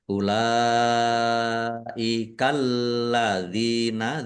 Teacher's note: Dibaca panjang harus lima harakat. Alladzina lamnya ada tasdidnya ditekan. Ya, dibaca dobel biar tampak ya di biar tampak dobel maka ditekan.